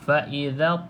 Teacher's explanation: masa kita lepas lidah tu pada makhraj huruf ta, di situlah terhasilnya bunyi qalqalah